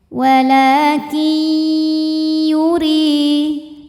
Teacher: Walakin, kin, ada idgham bighunnah karena nun sukun menghadapi huruf ya. Maka nunnya masuk ke ya disertai bunyi dengung.